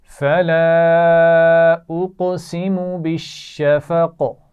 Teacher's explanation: اس کے نیچے زیر ہے لیکن جب ہم وقف کریں گے تو اس کو ساکن کریں گے, تو قاف جب ساکن ہوگا تو اس پر قلقلہ کیا جائے گا